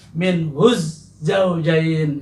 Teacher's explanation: alif pada kata zaujain ini tidak dibaca jelas, tetapi dilebur atau diidghamkan